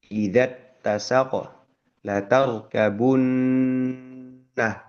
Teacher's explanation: Huruf nunnya tasdid, hukumnya adalah hunnah. Menahan lebih lama ya.